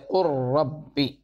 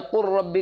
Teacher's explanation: اگر حرف مدغم کی کوئی صفت باقی نہ رہے بلکہ حرف مدغم بالکل مدغم فی جیسا ہو جاوے تو اس کو کہا جاتا ہے ادغام تام، جیسے قر ربی من لدنہ، قر ربی لام بالکل جو ہے را بن گیا اور را کا را میں ادغام ہوا